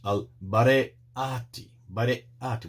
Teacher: The word is Al-Bare'ati, Bare'ati, with the glottal stop there